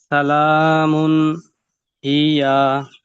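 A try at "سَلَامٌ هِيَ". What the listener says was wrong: হিয়া, টেনে পড়া যাবে না, হরকত এসেছে, তাড়াতাড়ি করে পড়তে হবে হরকতের উচ্চারণ। সালামুন হিয়া। এখানে রুলস, এখানে রুলস কি এসেছে? হামজা হয়ে যাচ্ছে, কেন তো হামজা নেই তো, দেখে বলেন। হ্যাঁ, তানভিনের পর হা এসেছে, মাশাআল্লাহ।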